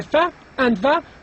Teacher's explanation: So we have the fa and the va, and these sounds are called labiodental because the lips are involved and the teeth are also involved as well